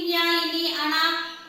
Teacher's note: ముక్కును ఉపయోగించి ఇన్య ఇని అణ న మే అక్షరాలు మనం పలుకుతాము వీటినే అనునాసికాలు అంటారు అనునాసికము అంటే అర్థం ఏంటి ముక్కు సో ముక్కుతో పలుకుతాం